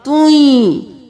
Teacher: تا 2 پیش یا, توئیں, تن نہیں کرنا, تا 2 پیش یا, توئیں. تا کو یا میں ملانا ہے گنہ کے ساتھ